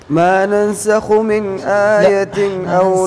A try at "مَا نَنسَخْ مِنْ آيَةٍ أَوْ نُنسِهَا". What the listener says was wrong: ننسخ ما عليها ضمة ما ننسخ.